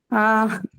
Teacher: Actually, ear will not have the r sound. It will only have this diphthong as the sound.